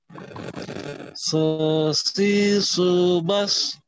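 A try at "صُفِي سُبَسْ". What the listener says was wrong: Belum naik itu pangkal lidahnya.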